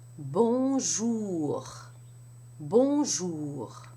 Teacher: For the R, you have the tip of the tongue down, touching the lower teeth. And there is a friction or gargling type sound way back in the throat.